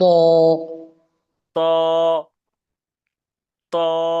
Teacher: জিহ্বার আগে উপরের দুই দাঁতের গোড়ার সাথে লাগবে।